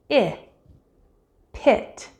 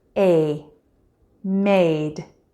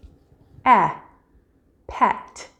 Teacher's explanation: these are vowels where the high part of your tongue is pushed forward and a bit arched in your mouth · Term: front vowels